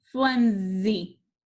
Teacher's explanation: what sound is that s making flimsy it's saying z